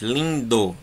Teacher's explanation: Nas paroxítonas, lindo, lin é a mais forte.